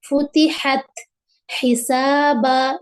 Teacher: मखरज number 3 जो है वस्त हलक, हलक का दरमियानी हिस्सा आयन और हा